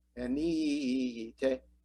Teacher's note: The accent is very important in Greek words, and the accented syllable is ni.